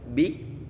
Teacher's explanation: Ini dia tipis bi. Dan pastikan suara yang terdengar adalah suara i, bukan suara e.